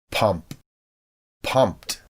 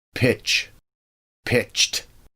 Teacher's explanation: When a whispered sound ends a root word, ed joins the word and a whispered t is heard.